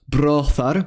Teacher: the “o” sound is only ever found in its long counterpart [o:] like the English “mode”.